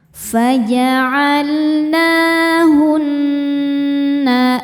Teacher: Ini hukumnya ghunah musyaddadah karena nun bertasydid. Cara membacanya berdengung. Tahan dengungannya kurang lebih dua harakat.